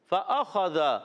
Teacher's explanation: فأخذہم، پھر وہی فا کی ادائیگی، فا اوپر والے دانت کنارے، نیچے والے ہونٹ کے تر حصے سے